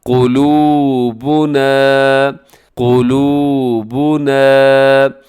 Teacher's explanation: قلوبنا، یہاں قاف موٹا پڑھا جائے گا، اور اسی طرح اس لفظ کے آخر میں الف کی وجہ سے آپ اس لفظ کو ذرا کھینچ کے لمبا کر کے پڑھیے گا